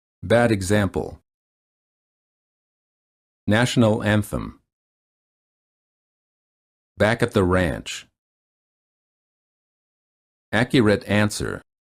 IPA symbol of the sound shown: æ